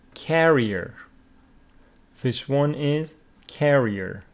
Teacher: carrier is someone who carries with the stress on the first syllable